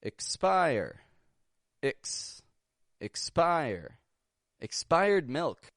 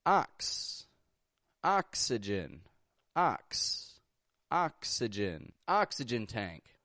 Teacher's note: KS, when we've got X in the middle of a word, typically when it's before an unvoiced consonant, and also when X is at the end of a word.